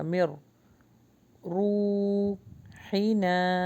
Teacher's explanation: نون skip ہوگا، میم را سے ملے گا